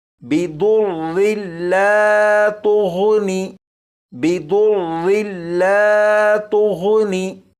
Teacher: ضاد اور غین ان دونوں کو پر یعنی موٹا پڑھیں گے